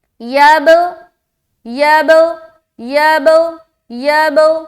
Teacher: یہاں پر قلقلہ کریں گے، کیونکہ با کے اوپر سکون ہے اور با حروف قلقلہ میں سے ایک ہے۔